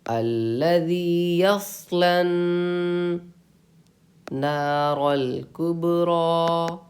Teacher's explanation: نون پہ تشدید ہے، آپ کو غنہ کرنا ہے اور غنہ کی مقدار ایک الف کے برابر ہے